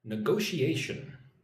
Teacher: It's like n go she a shun and all the emphasis is on go